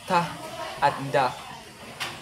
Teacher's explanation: dumididi naman sa loob ng mga ngiping itaas ang dulong dila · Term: pang-ipit